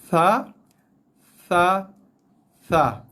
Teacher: hujung lidah keluar sikit daripada mulut kita, kena bahagian gigi atas yang tajam tu. Bahagian tajam gigi atas akan kena bahagian hujung lidah sebelah atas sikit.